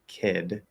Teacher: if I'm going from A into D, kid, I hold the voice the entire time